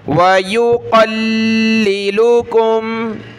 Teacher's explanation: پہلے لام کو سختی کے ساتھ پڑھنا ہے، دوسرے کو نرمی کے ساتھ